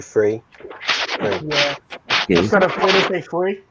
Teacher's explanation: British accent where they say the F instead of the th sound